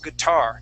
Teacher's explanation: The accent is at the end of the word. We say guitar.